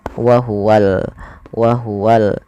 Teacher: Padahal kata alhaqqu di sini ada alif lam yang di mana di sini kita namakan dengan alif lam yaitu alif lam qamariah. Maka alif lamnya harus dengan jelas dibaca lamnya